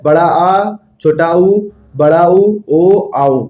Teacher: जिन स्वरों के उच्चारण में जीभ का पिछला भाग सामान्य स्थिति से ऊपर उठता है, उसे क्या कहते हैं? पश्च स्वर कहते हैं।